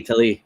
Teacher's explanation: So the emphasis is on the second syllable.